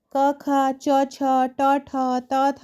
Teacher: जिनमें स्वर तंत्रियाँ झंकृत नहीं होती हैं उन्हें अघोष कहते हैं